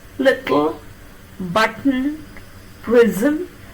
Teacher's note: Retain the contact with the alveolum that you make for t and move to l without removing the contact between the tongue and the alveolar ridge. That is how you need to pronounce kl.